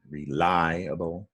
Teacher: The stress is on lie, reliable.